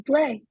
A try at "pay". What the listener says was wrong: Not to play, to pay.